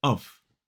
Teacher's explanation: So we use the schwa, and again, that F is pronounced V. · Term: weak form